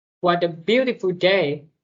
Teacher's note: The second way, what a beautiful day, rising intonation, meaning when said enthusiastically.